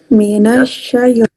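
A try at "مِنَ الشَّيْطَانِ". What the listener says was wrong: Nah, itu ada tambahannya. Minasyaitoni. Syaitan.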